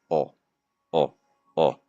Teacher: The very back of my tongue is going to be raised a little bit. Don't go too high. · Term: O sound